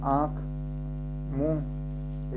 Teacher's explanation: तो हवा जो है नाक और मुंह दोनों से बाहर आएगी।